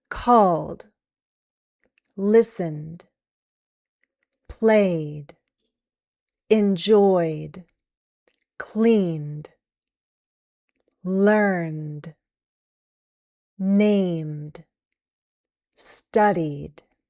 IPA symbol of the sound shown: d